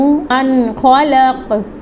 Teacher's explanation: نون ساکن کے بعد حروف حلقی آ گیا ہے، تو یہاں پہ غنہ نہیں ہوگا